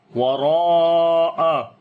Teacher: وراء، را کو موٹا پڑھیں گے، اس کے اوپر زبر ہے اور لمبا بھی کریں گے، الف مدہ ہے یہاں پر، الف مدہ کے بعد حمزہ اسی لفظ کے اندر آ گیا تو مد متصل ہے، واجب مد ہے، تو تقریباً 3 سے 4 الف لمبا کریں گے۔